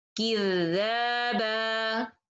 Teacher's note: So when I connect, I follow the tanween rules. When I stop with alif sakina, 2 beats like natural mad. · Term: مد العوض